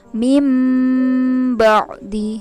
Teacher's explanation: Meme kecil di atas nah itu adalah termasuk bacaan iqlab maka harus ditukar dari nun sukun atau tanwin dengan mim sukun